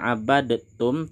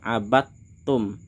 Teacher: Di sini bacanya tidak abadtum tapi langsung kita masukkan abattum. Ini merupakan hukum idgham mutajanisen.